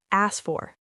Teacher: We delete the K sound in asked.